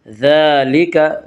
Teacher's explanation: ذال کے اوپر کھڑا زبر ہے، کھڑا زبر کو ایک الف کے برابر کھینچ کر پڑھیں گے